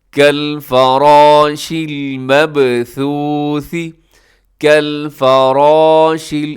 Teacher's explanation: کالفراش، اس میں بھی را موٹی پڑی جائے گی